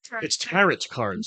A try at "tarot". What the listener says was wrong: No, the T is silent.